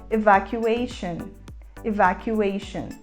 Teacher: começando com o som mais próximo do e fechado